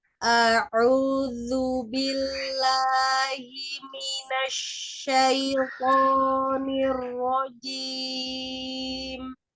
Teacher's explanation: huruf H-nya dikeluarkan tenggorokan bagian bawah dan huruf hamzahnya dibuka. Jadi jangan EU tapi A.